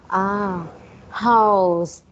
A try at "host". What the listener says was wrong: Okay. The letter T at the end. Host. Maintain your O. Like make it round. O. Ho. Ho. Host.